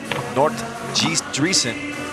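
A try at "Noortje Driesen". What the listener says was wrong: Well, you wrote it down like Nort, but it's Nortje. The J isn't that pronounced, but Nortje Driesen.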